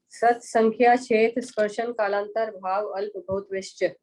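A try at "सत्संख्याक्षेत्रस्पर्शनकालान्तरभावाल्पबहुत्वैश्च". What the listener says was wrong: संधि विच्छेद नहीं करें, पढ़ें पूरा पढ़ें। हाँ, मतलब भाव अल्प ऐसा भेद नहीं करें, जब पढ़ रहे हैं सूत्र तो पूरा सीधा अखंड पढ़े, है ना। वैश्य, इस तरह से ये हुआ।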